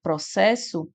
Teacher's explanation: Então essas duas letras você vai contar apenas como uma. Quando você fala a palavra processo, você escuta o som apenas de um S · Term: dígrafo consonotal